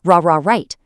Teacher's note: But for the R sound, in right, the tip of your tongue curls back and up, but, and this is the key, it doesn't touch anything.